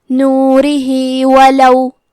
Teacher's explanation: کلمت نورہی میں ہا کے نیچے کھڑی زیر ہے، یہاں حکم ہے مد صلہ صغرا تو ہم اپنی آواز دو مد کے برابر لمبی کریں گے،